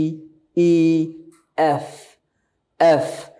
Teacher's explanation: এফটা একটু soft sound অর্থাৎ উপরের দাঁত নিচের ঠোটের সাথে